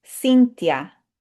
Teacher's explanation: the TH in Spanish will just say t because that H is silent